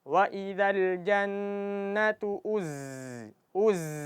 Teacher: Jadi jangan sampai kita baca waidal jannatu uz uz. Jadi aliran nafas itu tertahan di zain. Jadi zai cuma mengalir suara. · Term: huruf zai